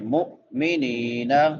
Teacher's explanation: میم کے بعد حمزہ ہے تو جھٹکا دیں گے یہاں پہ